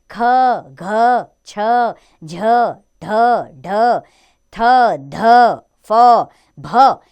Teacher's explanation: जिन व्यंजनों का उच्चारण करते समय वायु मुख से अधिक मात्रा में बाहर निकलती है वे व्यंजन महाप्राण कहलाते हैं ये इस प्रकार है जैसे ख घ छ झ ढ ढ